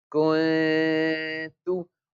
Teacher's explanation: We hide the sound of noon into our nose. Kaf noon damma kun, ta damma tu, kun tu. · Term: ikhfa